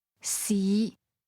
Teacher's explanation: Second tone mid rising